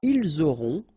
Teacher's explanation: ils auront, final T not pronounced, elles auront